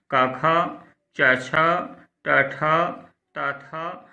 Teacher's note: जिन ध्वनियों के उच्चारण में स्वर तंत्रियों में कंपन अथवा गूंज उत्पन्न नहीं होती उन्हें अघोष कहते हैं।